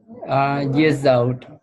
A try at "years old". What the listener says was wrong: Your D sound was removed. Okay, it sounded like 7 years old. yeah, D was missed. Okay, remember again, your voice is recorded and the recorder might not catch your last sound if it's very soft.